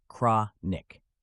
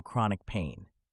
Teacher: Notice how the stress falls on the first syllable, cra. Understanding the meaning is crucial for IELTS success.